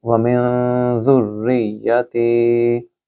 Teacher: یہاں نون ساکن کے بعد ذال ہے جو کہ 15 حروف اخفا میں سے ہے، یہاں آپ نون کے اوپر غنہ کریں گے۔ وَمِن ذُرِّيَّتِي، اور تی کو لمبا کریں، ذال کو را کے ساتھ ملائیں اور را کو یا کے ساتھ، ذُرِّيَّتِي، تی کے آگے یا مد ہے اس لیے میں نے اس کو لمبا کیا۔